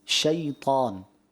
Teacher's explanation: مگر ایک چیز یاد رکھیے، جب آپ نے تعوذ پڑھا اس میں لفظ شیطان جب پڑھا نا اس میں لین ہے شیطان. اس کو اگر شیطا کریں گے نا تو یہ معروف سے مجہول کی طرف چلا جائے گا